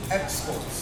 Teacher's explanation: we have the stress position on the first syllable. Then export as a verb, we have the stress position on the second syllable.